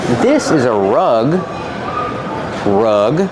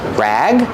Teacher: Rug has the short uh sound like cup and up.